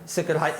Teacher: It's almost as if there's a little vowel between the C and the R. There isn't actually, but it's sort of in between.